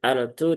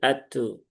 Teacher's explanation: Lam syamsiyah maka ee lam sukunnya tidak dibaca. Terjadi idgham di situ ya. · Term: idgham kamil